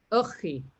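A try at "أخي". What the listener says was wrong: Okay, you cannot see the fatha here on top, but It's akhi. Now you remember we have seen the A, the alif, and we have seen the kha. Remember, it's one of the family of ha, kha, and ja.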